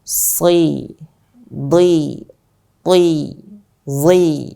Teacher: Terkhusus pada saat dia kasroh. Huruf shad, dhad, ta, dan dha, maka harus kita tebalkan pada saat dia kasroh. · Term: huruf yang sangat tebal